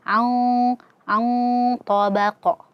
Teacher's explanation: Nun ketemu dengan huruf ta, maka di sini hukumnya adalah ikhfa dan tebal ya. Dibaca dengungnya dengan tebal ya.